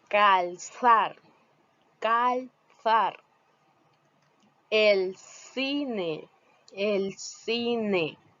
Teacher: en posición silábica nuclear antes de un fonema del archifonema C esta se pronuncia con el ápice de la lengua entre los incisivos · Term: lateral linguo interdental